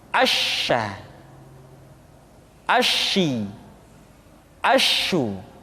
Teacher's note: Dan sifat yang dimiliki oleh huruf sya yang paling nampak adalah apa yang disebut dengan sifat at-tafashi, yaitu menyebarnya angin di dalam mulut kita